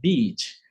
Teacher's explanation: o EA é falado como I longo apenas